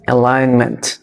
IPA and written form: əˈlaɪn.mənt (Alignment)